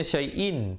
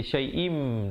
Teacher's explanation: وَلَنَبْلُوَنَّكُمْ بِشَيْءٍ, di situ hukumnya idgham bi gunnah. Asalnya syai'in, tapi bila datang mim jadi syai'im dengan kadar panjang 2 harakat.